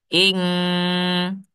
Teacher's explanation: nun sukun bertemu dengan kaf, dia seperti kuat sekali di hidung itu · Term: ikhfa